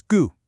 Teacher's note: The correct way to say it is gu. It's that sharp, falling sound combined with that burst of air from the ku. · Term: fourth falling tone